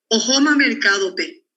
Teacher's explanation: la característica de este tono de frontera final alto es que sigue subiendo después de la tónica, es aún más alto que el que cae sobre la tónica